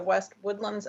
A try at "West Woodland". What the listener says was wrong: No S.